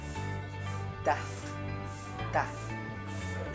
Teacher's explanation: ang dulo ng dila ay dumikit sa loob ng mga ngiping itaas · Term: pangi